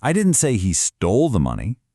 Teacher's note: You're implying you know who the real thief is and it's not him. Let's move the emphasis to the action word stole.